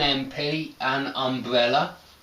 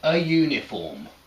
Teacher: uniform starts with a y sound not a vowel sound it's a consonant sound